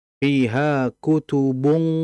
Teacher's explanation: Nah, jadi ikhfa qaf, memang kondisi ikhfa di sini agak sulit ya, dikarenakan memang ikhfanya qaf terlebih dhammah, sehingga memang ketebalannya pun tidak seperti halnya kalau ada yang fathah. Memang tidak terlalu terdengar, namun agak sedikit terangkat.